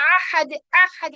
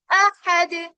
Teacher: حمزہ کہاں سے نکلتا ہے؟ بالکل باٹم والے پارٹ سے، یعنی bottom part of آر throat, ہمارے حلق کا بالکل نچلا حصہ. اس کو ہم آئین میں تبدیل نہیں کریں گے، یعنی کہ ہم کیا کر دیتے ہیں کئی بار حمزہ کو کر دیتے ہیں احد احد، یعنی بہت زیادہ زور لگا دیتے ہیں تو وہ آئین بن جاتا ہے.